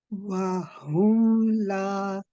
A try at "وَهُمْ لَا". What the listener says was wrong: Good, Barakallahu fiki.